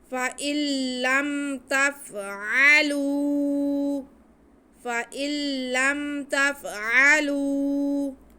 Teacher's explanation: عین کی آواز کو حلق کے سینٹر سے ادا کریں گے۔ · لام کی آواز کو ہم ایک الف کے برابر کھینچیں گے۔ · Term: واو مدہ